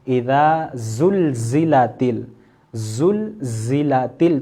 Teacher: زا سین صاد سب سے زیادہ سیٹی کی آواز نکلے گی زا میں